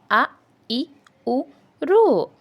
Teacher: హస్వములు వచ్చేసి ఒక మాత్ర కాలంలో ఉచ్చరింపబడేవి హస్వములు అని అంటారు